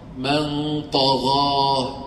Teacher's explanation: من طغى الغنه صارت مفخمه تاثرت بالطاء